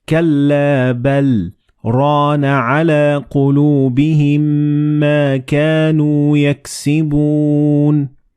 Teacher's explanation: you're going to stop very momentarily for like half a second and then continue reading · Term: very little pause